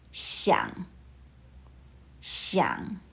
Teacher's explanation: 想 uses the third tone. Your voice falls, then rises. Listen once more.